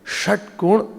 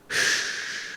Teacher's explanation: if you say Shatkon, the tongue is retroflex. Shh, like that. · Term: Murdhanya Sh